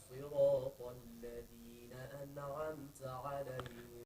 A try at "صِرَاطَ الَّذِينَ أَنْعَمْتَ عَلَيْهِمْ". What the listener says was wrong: The noon you get letting go of it too fast. Not أنعمت, no أنعمت. It's a common mistake that we make into a T sound.